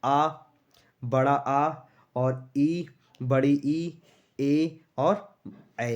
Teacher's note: इनको बोलने में हमारा जो होठ है वो गोल टाइप के नहीं हो रहे हैं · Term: आवृत मुखी